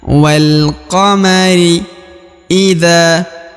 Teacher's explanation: huruf dza dibaca Dua harakat karena di depannya terdapat Alif